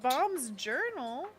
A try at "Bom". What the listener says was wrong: Bomb, not bomb. It doesn't have a B at the end. It's just an M. Like a pom-pom. But a bomb. Bomb. Not bomb.